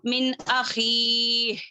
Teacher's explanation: جیسے کہ نون ساکین کے بعد اگر حرف حلقی میں سے کوئی ایک حرف آ جائے، جیسے کہ یہاں پر آیا، دیکھیں یہاں پر دیکھیں من ہے، یہاں پر آخی، حمزہ ہے، نون ساکین کے بعد حمزہ ہے تو وہاں پر غنہ نہیں کریں گے